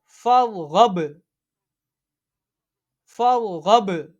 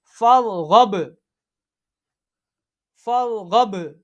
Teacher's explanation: یہ حروف قلقلہ ہے۔ جب حروف قلقلہ ساکن ہو اس میں قلقلہ خوب ظاہر ہوتا ہے، ٹھیک ہے۔ جنبش سی ہوتی ہے یعنی آواز لوٹتی ہوئی نکلتی ہے۔ فرغب، فرغب، یہ ہم نے وصل میں پڑھا ہے۔